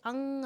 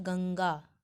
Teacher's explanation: अनुस्वार के उच्चारण में हवा केवल नाक से बाहर निकलती है, ठीक है। अनुनासिक के उच्चारण में नाक से भी मुंह से भी बाहर निकलती है, लेकिन अनुस्वार के उच्चारण में केवल नाक का प्रयोग होता है, अर्थात जो ध्वनि है वो नाक से आ जाती है।